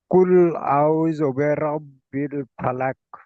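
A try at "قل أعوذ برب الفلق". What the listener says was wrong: জি, কুল আউ, এখানে দেখেন কফ লাম পেশ কুল, হামজা যাবার আ, এই হামজা যাবার আটা টান হবে না, কুলটা টান হবে না, তাহলে কুল আ।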